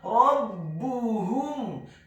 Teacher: Huruf ba-nya dibaca tipis, tarqiq ditasydidkan, ditekankan, dibaca dhammah 1 harokat